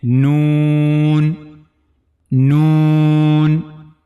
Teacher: The origin of this letter is tip of the tongue and gum of the two top front teeth from the internal side.